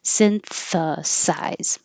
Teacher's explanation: be very tricky because there's s t h and S so behind the teeth for the S synth and out for the th and then back for the S synthesize try it slow if you have trouble moving between those